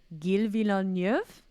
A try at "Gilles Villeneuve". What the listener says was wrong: No. It's a soft G, so it's Gilles.